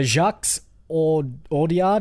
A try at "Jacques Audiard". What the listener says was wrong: Again, when it's French, I don't think you put the S on the end, so it's just Jacques. Jacques Audiard.